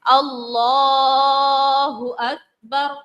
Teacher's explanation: آپ لام کو کھینچے اور کسی کو بھی نہیں کھینچنا ہے